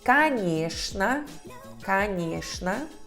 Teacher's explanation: A O e O são reduzidos até A, porque a sílaba tônica é nhé.